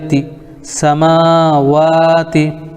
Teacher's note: تا کے نیچے زیر ہے، زیر کو جلدی پڑھیں، تھوڑا بھی نہ کھینچیں۔ معروف پڑھیں، مجہول آواز سے بچیں، زیر کی آواز نیچے کو جاتی ہے